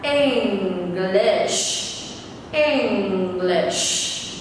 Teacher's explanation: Mọi người nhớ âm sh cuối phải phát âm thật mạnh nhé.